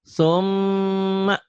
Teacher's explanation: Ketiga harus dengung ke hidung. Dengung ke hidung atau harus ada gunah.